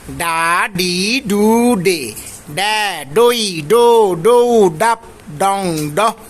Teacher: ট ঠ ড ঢ এই শব্দগুলো এই ধ্বনিগুলো উচ্চারণ করার সময় জিভাটাকে তালুর সাথে গিয়ে লাগাবো শক্ত তালুর সাথে